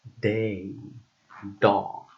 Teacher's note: D, which is a voiced alveolar and stop sound, like in day, dog.